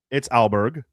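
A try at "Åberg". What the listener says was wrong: I bet on him. It has no L.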